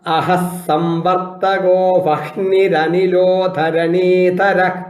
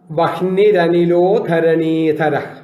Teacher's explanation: വഹ്നി കഴിഞ്ഞിട്ട് അവിടെ വിസർഗമാണ്. ആ സ്ഥലത്ത് രകാരം ഉച്ചരിക്കുക.